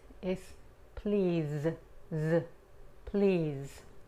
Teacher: Para pronunciar la Z en inglés, es como si fuéramos a pronunciar la S, pero en vez de colocar la punta de la lengua contra el paladar, colocamos solo la parte delantera de la lengua y no la punta, ok? Es como el sonido que hacen las abejas, ¿no?